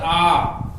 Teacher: আটাকে উচ্চারণ করার সময় আমাদের ওষ্ঠ এবং অধর না প্রসারিত হচ্ছে না কুঞ্চিত হচ্ছে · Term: মধ্যস্থ বা কেন্দ্রীয় স্বরধ্বনি